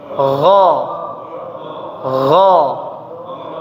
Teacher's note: Tidak terlalu kasar, bukan gha. Ya, bukan seperti orang mau buang dahak ya. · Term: huruf ghain